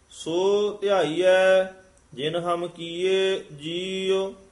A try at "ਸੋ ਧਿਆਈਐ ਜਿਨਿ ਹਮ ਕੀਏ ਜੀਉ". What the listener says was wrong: ਜਿਨ ਹਮ ਕੀਏ ਜੀਉ। ਜਿਨ ਹਮ ਇਕੱਠਾ ਨਹੀਂ ਕਹਿ ਦੇਣਾ। ਜਿਨ ਹਮ ਕੀਏ ਜੀਉ।